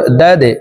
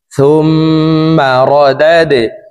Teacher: র জবর র, দাল দাল জবর দাদে, দাল কলকলার হরফ নিচের দিকে ধাবিত করে ধাক্কা দিয়ে উচ্চারণ করব